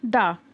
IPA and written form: ðə (the)